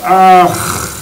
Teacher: associated with the syllable ah, the long ah, two ahs together make ah, and it ends with what's called a visarga, which is a sound.